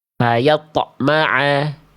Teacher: Karena ada hamzahnya, terputus pantulannya, tertahan bunyi pantulannya.